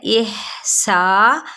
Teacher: سین کی سیٹی کو واضح کرتے ہوئے مد اصلی بالالف کا قاعدہ